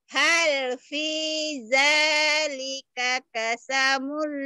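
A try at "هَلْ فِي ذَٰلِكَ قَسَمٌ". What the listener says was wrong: Kosamul. Kasamul. Kasamul. Kebalik. Yang harusnya ha jadi ho. Ho jadi ha ini. Ini ha. Ini ko. Jangan ketuker. Ha dibaca hol. Jangan hol. Itu hal.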